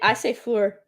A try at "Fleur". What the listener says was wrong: It's French. Fleur. I think you added vowels into it. It's Floor.